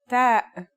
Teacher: like the English T, except you should release your breath with a strong burst of air